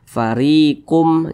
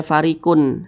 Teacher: Nah, jangan pakai n, tapi dirubah menjadi mim. Farikum minhum, didengungkan. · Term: idgham bi gunnah